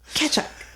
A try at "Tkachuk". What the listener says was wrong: It sounds like you're saying ketchup. It's not ketchup, like Heinz 67. Kachuk.